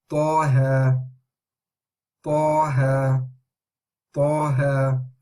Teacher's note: the ta is heavy letter, ha is light, so make sure you say that as well